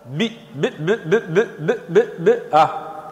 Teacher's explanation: الباء تخرج من الشفتين، سنرى ذلك، فلا بد من وضع الشفتين الأولى على الثانية